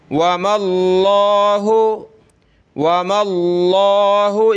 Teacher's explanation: سے پہلے زبر ہو یا پیش ہو تو موٹا کریں گے یہاں میم پہ زبر ہے تو لفظ اللہ کو پر کر کے موٹا کر کے پڑھیں گے